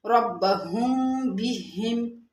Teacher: جب میم ساکن کے بعد با آئے تو وہاں پر اخفاء ہوتا ہے